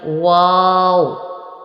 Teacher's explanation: واو دونوں ہونٹوں کا گول کرنے سے واو ادا ہوتا ہے